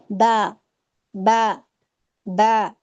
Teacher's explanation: دوسرا با میں ہمارا کلکلا بھی پایا جاتا ہے